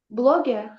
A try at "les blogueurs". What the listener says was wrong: Bloggers. Les blogueurs, bez S. Les blogueurs.